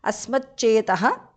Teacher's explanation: Asmat, the t in the end changes to ch because of sandhi.